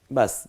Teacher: তারপর একক, বায়ের একক হলো ব, আকার দিলে বা, সেই বাটাকে একটু টেনে পড়ব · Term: খাড়া জবর